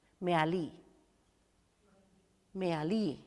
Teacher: And the last syllable is accented.